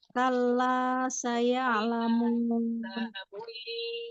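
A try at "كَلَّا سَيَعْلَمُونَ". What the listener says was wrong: kalla la 2 harokat, jangan terlalu panjang.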